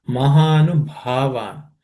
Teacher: This bha is aspirated. Fourth letter in the per class subcontinent.